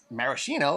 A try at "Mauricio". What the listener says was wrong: No. There's no N. Mauricio.